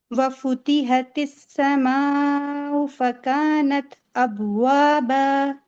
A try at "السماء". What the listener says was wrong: اس میں حمزہ کو نا الگ سے پڑھیں گے, اردو کی طرح سماؤ نہیں بولنا. سماؤ.